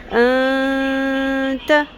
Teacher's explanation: میں نے نون کی آواز کو چھپایا بھی ہے، ان نہیں پڑھا، پڑھا ہے. اور اس کو ناک کی ہڈی میں لے جا کر تھوڑی دیر آواز کو ٹھہرانا بھی ہے. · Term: اخفا